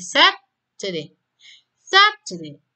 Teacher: Jadi Anda lebih ke sat itu kencang, today-nya itu lebih ke lemah ya bunyinya. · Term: make it louder